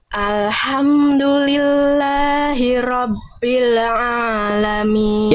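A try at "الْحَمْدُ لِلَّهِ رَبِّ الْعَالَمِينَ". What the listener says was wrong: Yang ini lebih bagus, tinggal lam sukunnya jangan bila. Jangan bila, tapi bil alamin.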